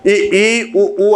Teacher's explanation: उसमें लगभग मुख बंद रहता है, ना के बराबर खुलता है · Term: समृत